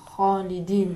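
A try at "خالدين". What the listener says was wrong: ماشاءاللہ.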